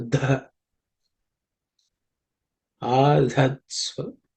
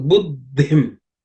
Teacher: This adha, this dha is the 4th letter in the tha varga. So it has to be aspirated with some extra air